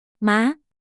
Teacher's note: Second tone rising, starts medium and rises to high.